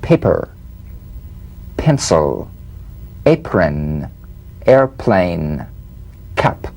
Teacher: The whispered tap of this drumbeat P is played with a light springing apart of the lips, just like for the B. On the springing away, feel a B in a whisper, without any puff of air. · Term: unvoiced labial stop consonant